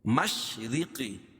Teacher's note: را کو باریک کیونکہ را کے نیچے زیر ہے، قاف کو موٹا